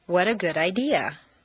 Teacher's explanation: make sure that the underlined unstressed T's sound like a soft d